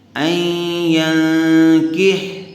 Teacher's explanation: نون ساکن کے بعد حروف اخفا میں سے کاف آیا ہوا ہے، اسے غنے کے ساتھ اخفا کر کے پڑھیں گے